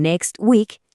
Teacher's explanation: en next week la T del medio se vuelve muda. [resoplido] Es que quitar esa consonante que está ahí atrapada hace que la frase se deslice mucho mejor, sin tanto esfuerzo. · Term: elición, elisión